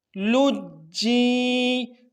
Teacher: سو پڑھتے ہیں، لام جیم پیش لوج، جیم اور فقر قلم سے قلقلہ کریں گے، لوج، اب جیم کو یا کے ساتھ ملائیں گے، جیم یا زیر جیم، لجی، اب جیم میں قلقلہ نہیں کریں گے ملاتے ہوئے